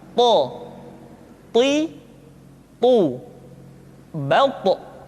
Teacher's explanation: To diucapkan dengan menyentuhkan ujung lidah dengan gusi-gusi dua gigi seri bagian atas. Sifat yang dimiliki oleh huruf to yang mesti nampak ketika kita ucapkan adalah sifat al-isti'la dan sifat al-itbaq. · ketika to diucapkan, suara kita terdengar menebal